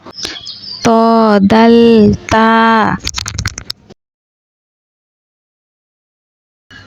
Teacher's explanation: জিহ্বার আগা সামনের উপরের ২ দাঁতের গোড়ার সঙ্গে লাগাইয়া ত দাল তা